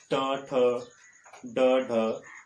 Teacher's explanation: जिन ध्वनियों के उच्चारण में जिह्वा नोक जो है वह उलटकर मूर्धा को छूकर हवा को रोक देती है तब उच्चारित ध्वनियों को मूर्धन्य ध्वनियाँ कहा जाता है।